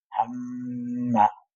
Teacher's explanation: ফেলে না এটার পরিমাণ ওই যে এক আলিফ দুইটা হারাকা পরিমাণ এক আলিফ টান যতটুকু এই গুন্নার পরিমাণও ততটুকু